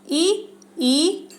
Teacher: तालव्य यानी कि तालु से ई और च वर्ग और य और श, ये यहाँ पे तालव्य यानी कि तालु से बोले जाते हैं